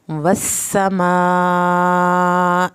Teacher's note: سین کے اوپر شد ہے، سیٹی کی آواز بھی نکلے گی، شد بھی پڑی جائے گی۔ والسماء، مد واجب کو 3 الف کے برابر لمبا کرنا ہے، حمزہ کی زیر کو لمبا نہیں کرنا۔